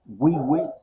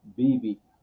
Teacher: no pronuncian wa y wi. Ellos utilizan la v o la b, por decirlo así, que es la pa, bi.